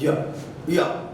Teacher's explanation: जीवा का जो भाग है वो आपके तालु के साइड थोड़ा सा टच कर रहा है, पीछे साइड। ये पर्वत जो बना हुआ उसके बैक साइड में, पीछे साइड में टच कर रहा है, मतलब तालु पर।